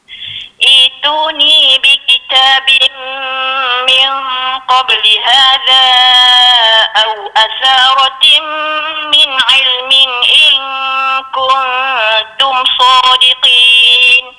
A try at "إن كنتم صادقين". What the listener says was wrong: Dengung bertemu dengan ta nipis sikit lagi. Kuntum. Nipis sikit.